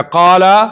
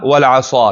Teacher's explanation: قال کې اوس 1 درجه تفخیم ده او په عصا کې 2 درجه تفخیم ده